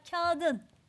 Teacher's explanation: T sesi yumuşayarak D'ye dönüştü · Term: ünsüz yumuşaması